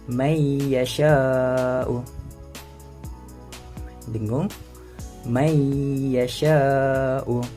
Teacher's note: menggabungkan bunyi nun kepada huruf selepasnya berserta dengung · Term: idgham ma'a gunnah